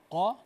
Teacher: Isti'la itu tebal. Kalau qa gitu tebal tuh. Kha tebal dia.